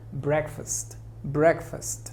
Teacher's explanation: La sílaba tónica es break. Fast se pronuncia muy sutil. Es una pronunciación débil. Aquí hay una schwa.